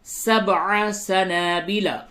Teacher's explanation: سبع با میں قلقلہ ہوگا اور عین کی آواز پہ خصوصی توجہ دیں